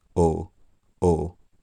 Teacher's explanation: the Scottish person in this situation would be keeping their tongue in more or less the same place um fairly mid height in their mouth and drawn back and keeping their lips rounded throughout the whole thing